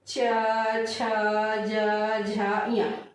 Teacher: ऊपर वाला भाग क्या हो रहा है, टकरा रहा है, जीभ ऊपर वाले भाग से क्या हो रहा है, टकरा रहा है, इसलिए इसे क्या कहा जाता है, तालव्य व्यंजन कहा जाता है।